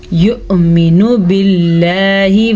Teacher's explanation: نون کے اوپر پیش ہے تو اسے کھینچنے کی غلطی مت کیجیے گا